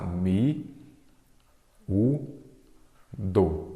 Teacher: a sílaba tônica é a penúltima, ela é o quê? Uma paroxítona